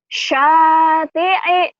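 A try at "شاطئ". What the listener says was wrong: Iya, bagus. Terus.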